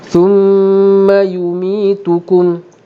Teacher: bila ada mim bersabdu sama dengan nun bersabdu memang akan didengungkan atas nama wajibul gunnah, 2 harakat dengung.